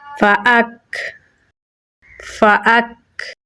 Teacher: کاف میں صفت شدت اور ہمز دونوں پائی جاتی ہیں تو پہلے ہم کاف پہ سختی کریں گے اور پھر سانس کو جاری کریں گے تو پڑھا جائے گا فاک فاک۔